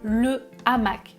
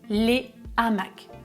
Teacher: Donc, je vais dire le hamac sans élision et au pluriel les hamacs sans liaison. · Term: H aspiré